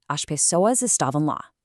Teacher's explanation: a single letter, just a tiny shift in breath from an s to a shish